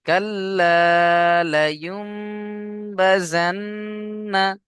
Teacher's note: চলেন তারপরে দেখেন, কাল্লা, কাফ লাম জবর কাল, লাম আলিফ জবর লা, কাল্লা, লায়ুমবাজান্না, লাম জবর লা, ইয়া মিম পেশ ইউম, এখানে নুন সাকিনের পরে বা এসছে, তাই নুন সাকিনকে ছোট মিমের দ্বারা বদল করে একালিফ গুন্না করে পড়তে হবে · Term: ইকলাব